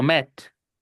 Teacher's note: Y como solamente tiene una única sílaba y solamente un acento, esa E no puede sonar I, va a sonar E